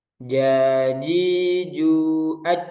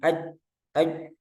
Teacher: Tertahannya aliran suara. Kenapa? Karena akibat tertutupnya makhraj. Jadi, rapat makhrajnya. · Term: syiddah